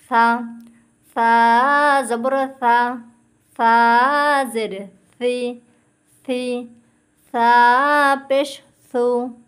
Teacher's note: জিহ্বার আগা উপরের দুই দাঁতের আগার সাথে লাগাবেন। উপরে দুই দাঁতের আগার সাথে লাগাবেন।